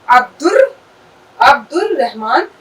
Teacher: ٹھیک ہے، یہاں پہ ہم نے یہ رحمان پہ اب یہاں سے اب دال کی جو سیدھے آواز آئی وہ ہم نے یہاں پہ لے لی عبد ار. الف کی آواز ہلکی نکل رہی ہے، رے پہ تشدید ہے